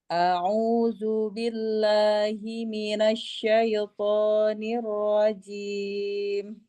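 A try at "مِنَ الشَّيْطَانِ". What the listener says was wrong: Ya, ketika minas itu jangan ditiup, jangan dengan bibir, tapi tengah lidahnya. Shin itu mahrojnya tengah lidah, hampir menyentuh langit-langit tengah. Jadi ada space untuk mengeluarkan udara. Asya didorong saja.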